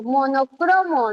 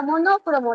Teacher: Cro, porque yo pronuncio monocromo, no existe la palabra monócromo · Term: sílaba tónica